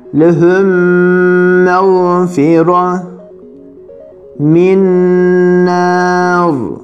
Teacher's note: Genizden gelen ses demekti gunne. Bir elif miktarı gunneli, yani tutularak genizden gelen sesle okunur. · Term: idgam-ı misleyn maal gunne